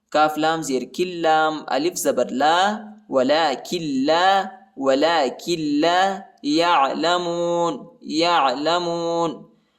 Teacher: کاف کو لام کے ساتھ ملائیں گے، نون ساکنہ نہیں پڑھا جاتا کیونکہ لام پر شد آیا ہے